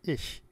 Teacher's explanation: German has a voiceless palatal fricative, as in the word ich, meaning I. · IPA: [ɪç]